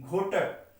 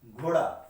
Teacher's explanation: घोटक में यहाँ पे टा है और बाद में यही परिवर्तित होके डा बन जा रहा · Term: घोषीकरण